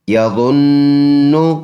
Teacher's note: ظا پر پڑھنے والا حرف ہے، نون مشدد ہے، پکا غنہ اس میں ایک کلی کی مقدار کریں گے. غنہ کہتے ہیں ناک میں آواز لے جانا، ناک میں آواز لے جانے کا نام ہے غنہ، اور اس کی مقدار ہوگی 1 سیکنڈ کی، 1 الف کی.